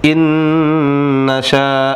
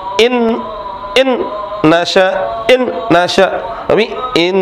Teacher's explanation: ditahan dua harakat disertai gunah gunah suara yang keluar dari hidung